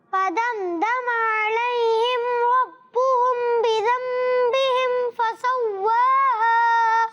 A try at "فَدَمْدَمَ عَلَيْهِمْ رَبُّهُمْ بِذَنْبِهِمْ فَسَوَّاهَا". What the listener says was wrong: ماشاءاللہ ماشاءاللہ، سانس آپ نے غنہ پہلے والا جو غنہ ہے ربہم بذنبہم، تو کوشش کریں اس غنے کو، دو غنے ہیں نا، ربہم میں بھی بذنبہم میں بھی، پھر دوبارہ کوشش کریں۔